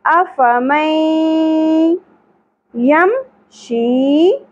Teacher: کیا پڑھیں گے کیسے ہم پڑھیں گے اس کو ادغام الغنہ نون کی اواز کو یا میں ملا دیں گے می اور کھینچنا بھی ہے غنہ بھی کرنا ہے افی یم